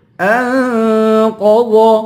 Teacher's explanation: انقض، ان پہ اخفا کریں گے، قاف اور ضاد دونوں کو موٹا کریں گے